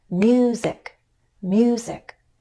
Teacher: I'm going up in pitch on mu and then down in pitch on zik. In other words, I'm going up on a stressed syllable and then I use the following unstressed syllable to step down. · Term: falling intonation